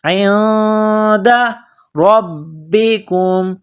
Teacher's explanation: نون ساکن کے بعد دال ہے, حروف اخفا ہے, غنہ کرنا ہے